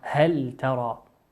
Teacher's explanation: أتى بعد اللام حرف التاء، والتاء من حروف الإظهار تظهر هل ترى. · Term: لام الحرف